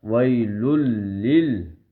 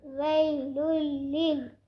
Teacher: ادغام کا مطلب ہے لام کو لام کے اندر مکس کر رہے ہیں، لام کے اندر ملا رہے ہیں